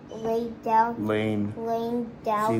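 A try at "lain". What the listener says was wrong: See, lane. It's an N.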